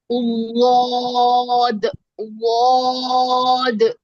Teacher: آگے ہے ظا اور ضاد ظا نرم اور موٹا ہے اور ضاد جو ہے یہ خوب موٹا اور دراز آواز ہوتی ہے ضاد کی اس کے مخرج کے اندر آواز اس کی پھیلتی ہے